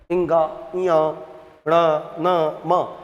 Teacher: तो हम प्राणवायु केवल मुख से नहीं निकालते। मुख के साथ-साथ नाक से भी निकालते हैं। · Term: नासिक वर्ण